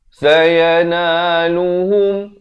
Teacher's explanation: Di sini pula kena dibacakan dengan idgham bi gunnah. Masuk beserta dengung kadar panjang 2 harakat. Daripada bunyi ghadabun jadi ghadabum.